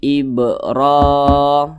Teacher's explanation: Ini huruf ro, di atasnya ada alif kecil, nah maka dibaca panjang. Namanya mad tabi'i, panjangnya 2 harokat atau kira-kira 2 ketukan.